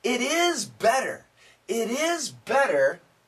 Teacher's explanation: He could just say it's it's better, but he says it separately to emphasize better.